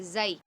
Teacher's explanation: वाव साकिन से पहले ज़बर हो तो वावलीन, या साकिन से पहले ज़बर हो तो यालीन, ठीक है बच्चों। इसको हम खींचेंगे नहीं, नरमी से पढ़ेंगे।